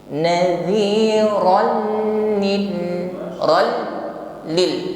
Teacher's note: Tapi tidak boleh ditahan terlalu lama karena tidak berdengung. Idgham bila guna. Masuk saja pada huruf lam tapi tidak boleh berdengung.